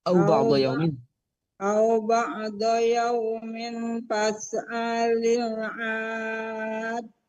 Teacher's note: Adin agak panjang, 7 harokat seperti waladhdallin. Jadi adin dari au ba'dha saja supaya nggak terlalu panjang. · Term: mad lazim